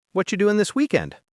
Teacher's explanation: notice how we said whatcha instead of what are you? That's natural spoken English. · Quick, soft, and full of connection. And notice how we said whatcha instead of what are you.